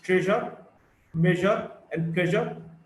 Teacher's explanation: J, voiced post-alveolar fricative.